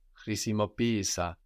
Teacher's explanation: because we are treating these two E's like two separate syllables, the first one takes the accent